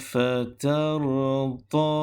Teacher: Perhatikan pada kalimah fatarudha, saya wakaf dengan kadar 2 harakat. Andainya kalau kita baca sambung antara fatarudha dan kalimah ataupun ayat alam yajidka, maka bacaannya perlu dipanjangkan dengan kadar 4 ataupun 5 harakat.